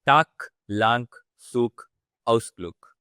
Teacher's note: the words which end with the letter G. So the pronunciation would be more like K.